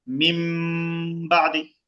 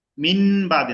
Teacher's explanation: যদি শুধু বাটা আসে তখন নুন সাকিন আর থাকে না, এটা মিম হয়ে যায়। কোরআন শরীফের সব জায়গায় নুন সাকিনের উপরে এরকম ছোট করে মিম দেওয়া থাকবে আপনাদের সহজের জন্য।